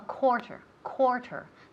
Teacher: the first syllable sounds like an oh